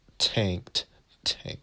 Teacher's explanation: Notice how tank is aspirated tank.